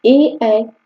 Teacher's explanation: कंठ और तालु दोनों से बोले जाते हैं। जिसको कंठ तालव्य कहा जाता है।